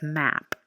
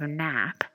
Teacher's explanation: similar in that they have a nasal quality and are both voiced sounds